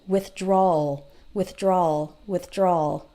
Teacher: you almost don't hear the W